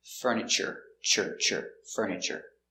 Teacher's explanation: Also, remember this word, furniture, you have that T-U in the middle. We pronounce it ch like chicken.